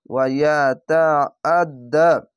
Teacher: আইনটিকে মোটা করে গলা চিপে পড়বেন।